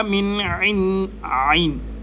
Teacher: من عین گلے کے درمیان سے